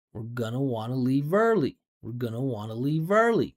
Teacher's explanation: notice when the pitch goes up, there's more space because it's stress.